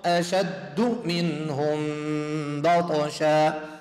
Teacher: جاءت ميم ساكن بعد باء إخفاء شفوي، ميم الساكن بعد باء إخفاء شفوي يمد حرفتين، بالإضافة إلى الإدغام المتماثلين يمد حرفتين.